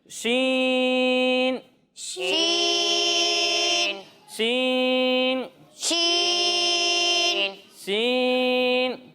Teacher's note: جب ہم اس کی ادائیگی کریں گے تو اسے بھی ہم سین کی طرح زا کے مقابلے میں تھوڑا زیادہ کھینچیں گے